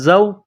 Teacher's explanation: زا میں سیٹی کی آواز پیدا کرنی ہے، زا کو پڑھتے وقت دانتوں کو ملانا ہے سختی کے ساتھ ، زا واو زبر زو، زا کو واو کے ساتھ پلس